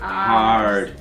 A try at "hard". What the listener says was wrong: Yes, there is the letter R in that word. But actually in New Zealand we don't pronounce it, we say hard.